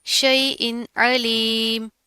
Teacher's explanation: पहले हमजा की आवाज़ है, फिर आइन की है, दोनों को आपने प्रॉपर वाज़े फ़र्क करना है।